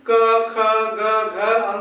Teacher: अर्थात हमारा क्या कंठ से टकरा रहा है, इसलिए इसका नाम कंठ हो गया